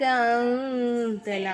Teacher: எஹ்ஃபாவோடைய சட்டத்தை ஃபாலோ பண்ணிக்கணும். மூக்கில் மறைச்சி குன்னா செஞ்சு ஓதணும்